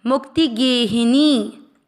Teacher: त्रिसंध्या मुक्ति, मुंह के साथ में मात्रा के अंदर का आधा क, मुंह के साथ क्या मुक्त, त पर ई की मात्रा मुक्ति, गे को दीर्घ करना है, ही की मात्रा छोटी और नी को दीर्घ करना है।